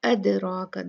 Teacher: रा हैवी होगा, मुफख्खम होगा, भारी होगा, क्योंकि उस पे फतहा है, उस पे ज़बर है।